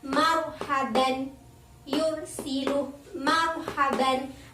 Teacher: Ada ro sukun, sebelumnya itu hurufnya berharokat fathah atau dhammah, maka hukum ro-nya itu dibaca tafhim atau tebal.